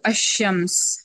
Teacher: شین پر شدہ ہونے کا مطلب یہ ہے کہ اس میں ایک لام کا ادغام ہو گیا، لام مرج ہو گیا اس کے اندر